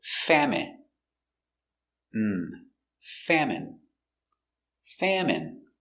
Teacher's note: Stress on the first syllable.